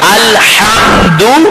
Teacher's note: کوشش کریں اس ہا کو حلق سے ادا کریں